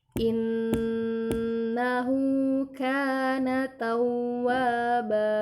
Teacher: ada nun bertanda tasydid, jangan lupa ditahan selama 3 harokat